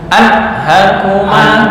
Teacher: Anhakuma ini nun bertemu ha nggak boleh dengung